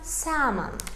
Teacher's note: Salmon sözündə artıq biz onu tələffüz edərkən el hərfi düşür. El hərfini oxumuruq.